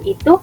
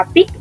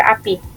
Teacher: alofon I tinggi atas tak bundar depan dan I tinggi bawah tak bundar depan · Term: fonem I